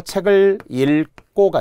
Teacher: 여기를 바로 리을을 살려주라는 거예요. 리을을 살려주고 기역 2개는 여기에 된 소리로 바뀌는 거죠.